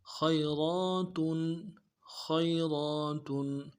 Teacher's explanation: خا کو موٹا ادا کرنا ہے، یا کے ساتھ ملانا ہے، یا لین ہے، بغیر کھینچے پڑیں گے ، را کے اوپر کھڑا زبر ہے، موٹا کریں گے، اور